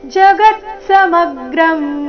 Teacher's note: ಗ ಮತ್ತೆ ಮ ಮೇಲೆ ಮೇಲೆ ಆಘಾತ ಬರಬೇಕು